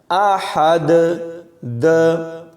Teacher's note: جب یہاں وقف کیا جائے گا تو دال کے اوپر دو پیش جزم میں بدل جائیں گے، تو یہاں پر کلکلا ہوگا، احد، د۔ اس کو بغیر کلکلے کے نہیں پڑھنا، یعنی احد، احد ایسے نہیں، احد آواز کو کھلا چھوڑ دینا ہے، احد، قل هو اللہ احد۔